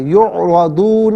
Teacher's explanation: را پر زبر ہے، را کو پر کر کے پڑھیں گے۔ اولئک یعرضون علی ربہم، را پر زبر ہے، را کو پر کر کے پڑھیں گے۔